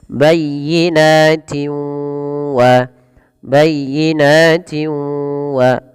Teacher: cara membacanya memasukkan suara tanwinnya kepada huruf waw. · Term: idgham bi gunnah